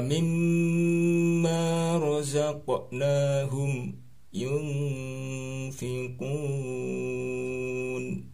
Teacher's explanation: mim nya dibaca jelas tanpa berdengung